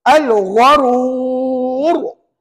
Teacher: oleh kerana ra tu di akhir kalimah sebelumnya ada huruf wau maka tuan-tuan kena baca tebal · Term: R tebal, ra tebal